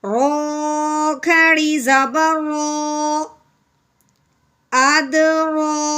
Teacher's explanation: یہاں پہ کھڑی زبر کو اپنے ایک الف کے برابر لمبا کرنا ہے، ساتھ ساتھ رو کو موٹا بھی پڑھنا ہے۔